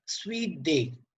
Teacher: Both syllables are stressed. Sweet is stressed and day is stressed. So this is an example of spondy.